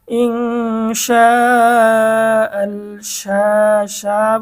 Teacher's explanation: শা শা বলে 4 আলিফ টানবো, মধ্যে মুত্তাসিল